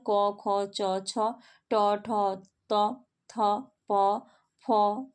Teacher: जिस वर्ण के उच्चारण में स्वर यंत्रिक में कंपन नहीं होता उसे क्या कहते हैं हम? अघोष वर्ण कहते हैं।